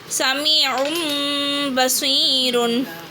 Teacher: தன்வீன் நம்ம என்ன மாற்றிடும்? மீமே சாக்கினா மாற்றிடும். மீம் வச்சு மாற்றிடும்.